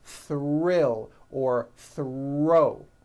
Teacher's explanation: When producing these blends, I want you to be aware that the R is the strongest sound of the blend and is louder than the TH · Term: th our blends, THR blends